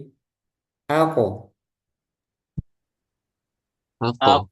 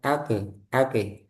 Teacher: Nah, nah, jadi makhraj yang paling pertama itu qaf di bagian lidah, yaitu pangkal lidah menyentuh dengan langit-langit bagian yang lunak